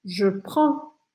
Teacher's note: Olha, eu não vou falar o D, tá? Eu deixo minha boca aberta